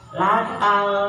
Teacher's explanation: ciri alif lam qamariah lamnya ada dan dibaca